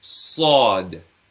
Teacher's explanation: Whereas Sad, you can see, has an roundedness to it. So you're pronouncing it with a round mouth